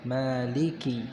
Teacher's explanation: Karena ada ya setelahnya, maka kasrah yang ada pada huruf kaf harus jelas. Maliki yaum. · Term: kasrahnya kaf itu jelas